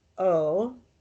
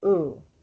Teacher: that the letter o is a bit of a chameleon um in the zoho dialect it's rarely pronounced o it's usually pronounced oo